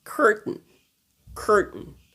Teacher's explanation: on a le R dans la bouche, pas dans la gorge